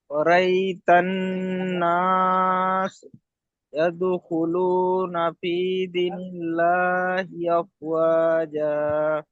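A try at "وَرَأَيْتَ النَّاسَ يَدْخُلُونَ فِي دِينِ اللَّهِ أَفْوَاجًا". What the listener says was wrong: এখানে দি টান হয়নি, দীনিল্লাহি আফওয়াজা। আপনি এখানে আবার গুণনা করেছেন, ওয়ারা আই, এমন করেছেন, ওয়ারা আই তান, এমনই হবে, ঠিক আছে? ওরা আই, এমন এখানে এখানে কি আসছে বলেন তো দেখি, আচ্ছা বলেন, এই যে এখানে ওরা আই, বলেন এখানে কি এসছে, এখানে হুরুফে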